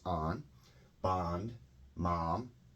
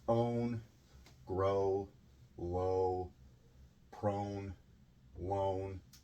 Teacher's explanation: the short o is an ah sound the long o is an o sound